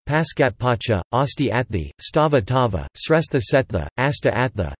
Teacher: Sanskrit sibilants before a stop assimilate to that stop, and if that stop is not already aspirated, it becomes aspirated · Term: partial and mutual assimilation